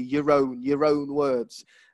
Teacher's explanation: this time you do hear the r sound because it's before a vowel